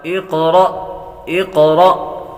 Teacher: قاف حروف مستعلیہ میں سے بھی ہے، اس کو پر بھی کریں گے، اور حروف قلقلہ میں سے بھی ہے تو قلقلہ بھی کریں گے، اور حمزہ ساکنہ کو ہمیشہ جھٹکا دے کر پڑھتے ہیں۔